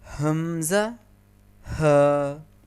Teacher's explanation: حمزہ ہا حلق کے اس حصے سے ادا ہوتے ہیں جو سینے کی جانب ہوتا ہے، یعنی آپ کے حلق کا سب سے نچلا حصہ۔ اس حصے کو اقصائے حلق بھی کہتے ہیں۔